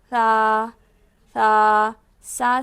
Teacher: تا تا تا اس کے بعد تھا تھا تھا کو دیکھیے زبان کی نوک اس برابر اوپر کے 2 دانتوں کے کنارے سے، ہم نے دیکھا تھا تا جو پڑے تھے وہ 2 دانتوں کی جڑ سے پڑے تھے، اب تھا 2 دانتوں کے کنارے سے، یعنی زبان کی نوک کو لیجئے اور یہ جو 2 دانت ہے اوپر کے وہاں پہ کنارے پہ لگائیں اور نرم ادا کریں۔ تھا تھا سا نہیں پڑھیں گے، غلط ہو جائے گا، تھا پڑھیں گے۔